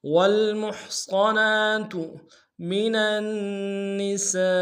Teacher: والمحصنات من النساء، منن میں میم کو نون سے ادا کریں گے، نون کو اگلے نساء کے نون کے سامنے لانا ہے، نون کے اوپر تشدید زور دیں گے، سین کی سیٹی باریک ہوگی، سین کے ساتھ الف مدہ کے اوپر بڑا مد ہے